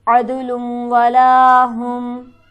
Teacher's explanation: अद के दाल पर हमारे पास हरफ कलकला है। यहाँ पर इस तरह से पढ़ेंगे कि आवाज़ उछलती हुई मालूम होगी। वला में लाम पर हमारे पास हरफ मद्दा मौजूद है जिसे हम खींचेंगे एक अलिफ के बराबर।